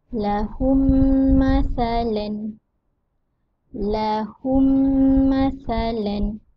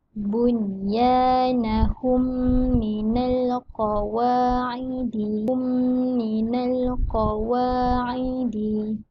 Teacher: Idgham mithlain syafawi dibaca dengan merapatkan kedua bibir beserta dengung.